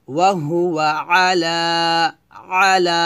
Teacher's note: লাতে এক লিপ টান হবে